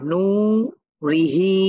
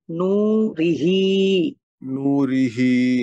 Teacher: জের ঋ র তু টান হবে না র টান হবে না তাহলে নু তে টান হবে আবার হা খারা জের হি হা তে টান হবে